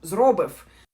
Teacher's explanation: The first syllable is stressed. And there is F sound at the end